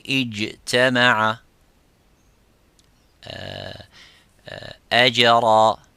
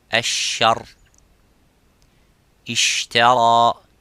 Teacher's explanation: The jim does not have any gap. Exactly the same as the qaf. Jim and qaf are the same by holding and touching that parts.